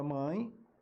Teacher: a letra é e mas o som é i